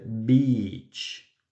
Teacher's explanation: es muy importante alargar la I